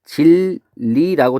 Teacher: 니은이 리을로 바뀌었어요 · 유음이 아닌 게 유음으로 바뀌었으니까 변동의 종류는 유음화라고 부르면 되겠죠